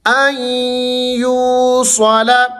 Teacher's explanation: بہ ان یوصل، اب آپ یہاں پر دیکھیں ادغام ہو رہا ہے، آ کو آپ نے ڈائریکٹ یا کے ساتھ ملانا ہے، نون یہاں پر خاموش ہے۔ ان یو، وہ مد ہے، یو کو آپ نے کھینچنا ہے۔